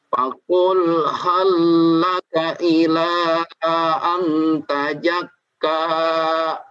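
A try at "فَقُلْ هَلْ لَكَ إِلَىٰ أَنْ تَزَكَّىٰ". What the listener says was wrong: Tazakka. Diulang lagi ilanya kurang panjang. Dicoba lagi.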